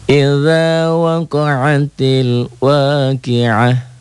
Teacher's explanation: ta marbutoh di ujung, jika dihentikan bunyinya menjadi ha